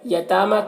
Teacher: تا میں کھڑا زبر ہے، اسے ایک الف کے برابر کھینچ کر پڑھیں گے.